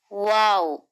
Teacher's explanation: वाओ मखरजे शफवी दोनों होठों के मिलने से वाव अदा होता है। दोनों होठों को कुल्ली की तरह गोल करके आगे लाने से वाऊ अदा होता है।